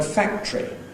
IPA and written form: ˈfæktri (factory)